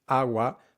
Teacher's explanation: when they say agua, both syllables are nearly identical in length